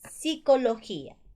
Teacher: Separación de dos vocales en diferentes sílabas. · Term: hiato